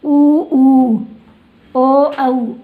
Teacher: ये 2 प्रकार के होते हैं, एक वृत्तमुखी और एक अवृत्तमुखी। वृत्तमुखी मतलब है अपने होठ है वो, इनको बोलते समय कैसे हो जाते हैं? गोल · आप बोलकर भी देख सकते हो, इनमें अपने होठों का आकार वो कैसा हो रहा है? गोल हो रहा है